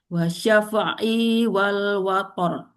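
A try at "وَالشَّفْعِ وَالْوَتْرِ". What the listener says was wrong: I-nya pendek dulu. Wasyaf'i wal. I-nya pendek.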